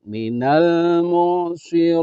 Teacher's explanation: Musiratima, ti ke ma, ti-nya pendek, minal musiratima. Jadi ti-nya jangan dipanjangkan karena tidak panjang. Jangan minal musiratima, nah, itu kepanjangan, harus langsung.